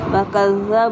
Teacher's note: بو پہ واؤ مدہ ہے، 1 سے 2 حرکات کھینچ کے پڑھیں گے، زال کو نرمی سے ادا کریں گے، شدت کے ساتھ پڑھیں گے۔